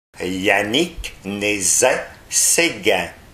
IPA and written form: ja.nik ne.zɛ se.ɡɛ̃ (Yannick Nézet-Séguin)